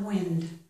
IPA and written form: wɪnd (wind)